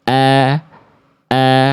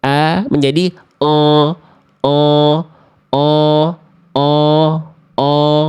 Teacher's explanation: huruf berharakat fathah yang vokalnya a murni itu tipis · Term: vokal a yang murni